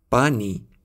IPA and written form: paː.niː (پانی)